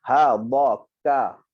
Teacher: Kaf bila dia berbaris maka dia tidak ada angin. Cuma bila dia mati dia ada angin.